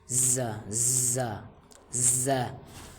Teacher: زا سے ہمیں سیٹی کا آواز نکلنا ہے، زور دے کے اس طرح کا آواز نکلنا ہے تاکہ نرم نہ ہو، ز۔